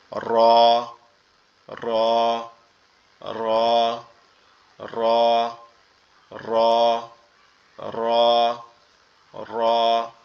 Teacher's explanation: আর র এর উচ্চারণটা কোথা থেকে হবে, র এর উচ্চারণ আমাদের জিহ্বার উল্টা পিঠ, মানে এই অংশটা জিহ্বার উল্টা পিঠ, জিহ্বার উল্টা পিঠ তার বরাবর উপরের তালুর সঙ্গে লাগায়া, জিহ্বার উল্টা পিঠ তার বরাবর মানে তার সমান সমান উপরে তালুর সঙ্গে লাগায়া র র র র র র র, এরকম ভাবে উচ্চারিত হবে